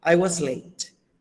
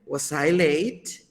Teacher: en la oración afirmativa comenzamos arriba y terminamos abajo. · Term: descendente